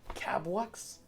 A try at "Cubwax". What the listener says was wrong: It's Cubwax. Cubwax. The first syllable. it's not Cabwax, it's Cubwax.